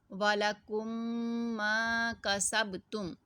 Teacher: میم ساکن کے بعد میم آ گئی تو اس کو ہم نے ادغام شفوی کرنا ہے، یعنی غنہ کر کے پڑھنا ہے